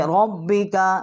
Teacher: ربک، اور ہم اس کو تشدید کریں گے با کے ساتھ۔ اور کاف جو ہے یہ حلق سے، یہ منہ سے ہی نکلے گی، اور کوے کے متصل تھوڑا سا اس کو ہم باریک کریں گے